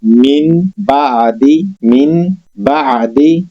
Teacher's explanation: نون کی آواز میم میں بدل جاتی ہے جب ہمارے پاس نون ساکن کے بعد با آ جائے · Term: اقلاب